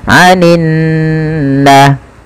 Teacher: kita baca dengan menahan suara nunnya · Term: gunnah